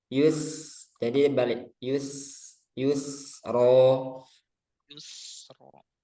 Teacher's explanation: Jadi yus itu sinnya tipis